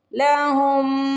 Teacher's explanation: ربہم بالغیب لہم، یہاں پہ دیکھیے میم پہ تشدید آ رہی ہے، میں نے شروع میں بھی آپ کو بتایا ہے نون پہ اور میم پہ تشدید آئے گی تو ہم ڈائریکٹ غنہ کر لیں گے، یعنی تھوڑی دیر لگائیں گے اور ناک میں آواز لے کے جائیں گے۔